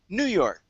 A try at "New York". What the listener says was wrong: we don't say new york we say new york we stress the second word